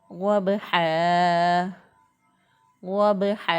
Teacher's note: तो गौद को बा के साथ मिलाएं तो बा जो है वो साकिन हालत में यहाँ पे मौजूद है, तो साकिन हालत में बा पर कलकला होता है · इन हरूफ में साकिन हालत में कलकला वाज़े होता है, तो इसलिए बा पर हम कलकला करते हुए पढ़ेंगे। हा को वस्ते हलक से अदा किया, गले के दरमियान से हा को अदा करते हुए हमने इसको एक अलिफ के बराबर लंबा किया, क्योंकि दो ज़बर की तनवीन जो है वो वक़फ़ की सूरत में अलिफ से बदल जाती है, तो इसलिए एक अलिफ के बराबर इसको लंबा करते हुए पढ़ा।